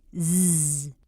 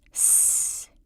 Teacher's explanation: If you whisper that same sound, you end up with s, and you feel that your fingers don't vibrate. So zzz is a voice sound, s unvoiced.